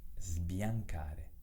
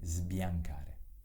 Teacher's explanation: La S è sonora perché si trova davanti ad una consonante del tipo B, D o M. In questo caso davanti alla B.